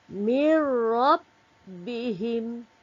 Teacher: Antara nun tadi dengan ra tu tak perlu nak didengungkan. Apabila nun mati bertemu dengan ra, hendaklah kita memasukkan sebutan nun mati tadi ke dalam huruf ra. Kita masukkan terus tanpa dengung.